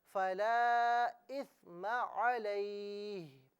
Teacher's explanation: فَلَا إِثْمَ عَلَيْهِ, اب یہاں پر رکیں گے تو اسے یوں پڑھا جائے گا فَلَا إِثْمَ عَلَيْهِ. ہا کی زیر کو نہیں پڑھا جائے گا, صرف ہا کی آواز نکالی جائے گی وقف کی صورت میں